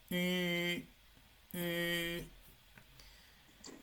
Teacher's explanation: ese sonido, la U con diéresis, es un sonido entre la U y la I, ¿no? Sonaría algo así.